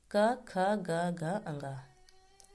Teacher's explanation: इन वर्णों का उच्चारण करते समय कंठ को स्पर्श करते हुए निकलती है। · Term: कंठ्या वर्ग